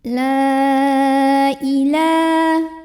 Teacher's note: maka lamnya dipanjangkan boleh 4 boleh 5 harokat. La ilah. La ada mad asli atau mad tabi'i karena ada baris fathah tegak di atas huruf lam. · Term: mad jaiz munfasil